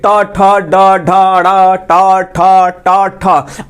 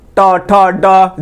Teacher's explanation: जैसे दांत के ऊपर जाइएगा यहाँ पे तो दांत के ऊपर जो है आपका एक गड्ढा टाइप का दिखाई देगा, अब उसी को मूर्धा बोला जाता है। अब मूर्धा के पास जीभ जाकर मुड़ जा रहा है